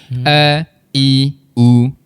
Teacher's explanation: Kalau huruf hamzah di bahagian rongga kerongkong bahagian bawah sekali tipsnya mudah a lepas aje suara kita.